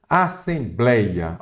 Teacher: Assembleia olha aqui a sílaba tônica é o blei